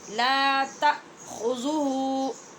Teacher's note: خوا پورے حلق میں رگڑ کی آواز کے ساتھ ہے، لال باریک ہے، اور آخر والا ہو جو ہے یہ موٹی آواز کے ساتھ ہے.